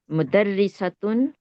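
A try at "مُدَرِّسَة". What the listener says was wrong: مدرسۃ مدرسۃ یہ مدرسے پہ زبر آ رہی ہے ٹھیک ہے اس میں پیش آ رہی ہے مدرسہ مدرسہ کیا ہوتا ہے فیمیل ٹیچر مدرسن ہوتا ہے اور مدرستن ہوتا ہے مدرسن یہ مدرسہ ہے فرق کرنا ہے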